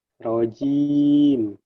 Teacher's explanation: Yang betul adalah tengah lidah kita ke atas, bukan ujung lidah yang ke atas. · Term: huruf jim